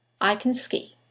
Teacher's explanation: the modal verb can in the sentence it will sound like can the vowel disappears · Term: weak forms